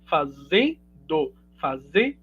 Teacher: uma queda né do d aqui do gerúndio · dessa forma Retiro d e ocasiono uma reestruturação silábica aqui né o n que era que tava travando a sílaba anterior passa a fazer parte então da última sílaba